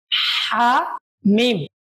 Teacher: বড় হা গলায় চাপ দিয়ে উচ্চারণ করতে হবে